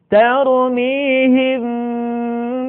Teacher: Mim mati ketika bertemu dengan huruf ba, bibir tidak sempurna rapat, melainkan agak direnggangkan sedikit.